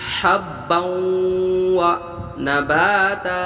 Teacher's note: ادغام بالغنہ ہوا آواز کو ناک میں ایک الف مدار روکنا ہے